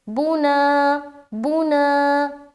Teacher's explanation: بو میں نہیں کھینچ رہے، نا میں کھینچ رہے۔ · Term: الف مدہ